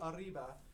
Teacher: they have a roll or a trill or the tongue goes back and comes right back